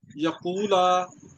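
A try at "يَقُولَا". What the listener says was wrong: اس کو لمبا کریں، یقولا،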